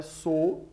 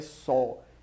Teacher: Não é j, é já, e não é sou, é só. Então são monossílabos tônicos com som aberto. Por isso, grafa-se o acento agudo e não o circunflexo.